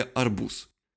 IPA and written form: ɐrˈbus (арбуз)